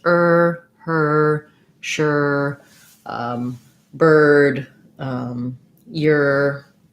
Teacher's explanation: when i'm saying the er sound my tongue is back and tight and it's only one sound there's no movement of the tongue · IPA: /ɝ/